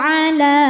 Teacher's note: Maka lam dipanjangkan boleh 4 boleh 5 harokat. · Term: mad jaiz munfasil